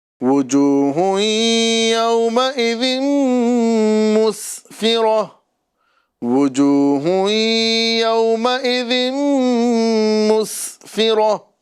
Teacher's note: یہاں پہ سین سیٹی کے ساتھ ادا کرنا ہے